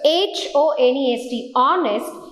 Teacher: you're talking about honest where the h is silent